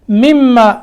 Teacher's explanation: تو ہم میم کو میم سے ملائیں گے اور نون جو ساکن ہے یہ بیچ میں سے ختم ہو جائے گا